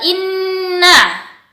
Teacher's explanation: Nun bertasydid itu harus ditahan sementara